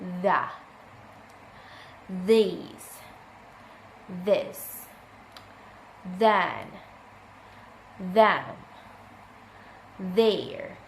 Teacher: Voiced dental fricative sound, the, these, this, then, them, there.